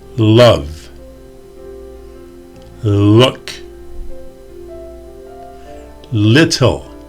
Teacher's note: The L sound uses the tip of your tongue. It touches the roof of your mouth just behind your teeth.